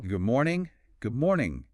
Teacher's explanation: Or even goom morning. The D in good changes to be more like the M in morning.